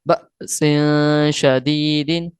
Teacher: ہم نے جھٹکا دے کر پڑھنا ہے با حمزہ زبر با کو